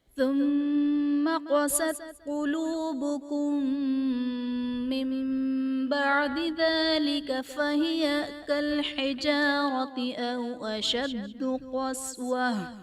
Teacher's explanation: من بعد میں نون ساکن کے بعد حرف با آ رہا ہے تو یہاں پر اقلاب کا قاعدہ ہوگا، یعنی نون ساکن کو ہم میم سے بدل کر اخفا کریں گے، یعنی غنہ کر کے پڑھیں گے